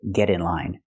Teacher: we use a different verb we say get get in line we hear the pronunciation of T change to a fast D because it's between vowels